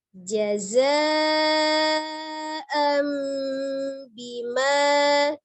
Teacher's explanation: Jazaa'am bima, ada hamzah, fathah, tanwin bertemu dengan ba. Nun sukun atau tanwin bertemu dengan huruf ba, hukumnya adalah iqlab. Ya, merubah nun menjadi mim, merubah bunyi nun sukunnya menjadi mim sukun. Jadi dari an dibaca am menjadi mim sukun.